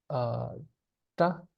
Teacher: And the way we would pronounce it is this retroflex sound, ta. Like I said, you put the tongue up there, ta.